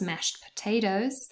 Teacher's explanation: you say it fast the t in mashed disappears